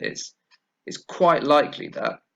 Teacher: I didn't pronounce t because the t sound is between two other consonant sounds. So in English, when that happens, we lose the t sound.